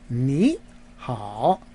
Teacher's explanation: you put two third tones together in Mandarin in the pronunciation the first of the two tones becomes a second tone a rising tone